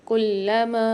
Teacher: لام کے اوپر تشدید مشدد ہے تو یہاں پر ہم سختی اور جماؤ کے ساتھ پڑھیں گے، اور چھوٹا والا مد آ رہا ہے الف مدہ کے اوپر تو یہاں پر ہم 4 الف مدار کھینچ کے پڑھیں گے۔